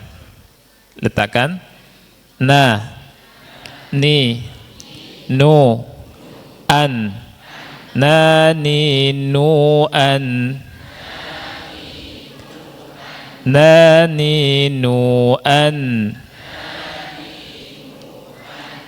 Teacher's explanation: ujung lidah posisinya di gusi 2 gigi seri, plus di khayshum, di pangkal hidung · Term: nun